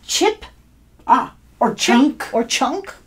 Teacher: you feel that burst of air it's like a burst of air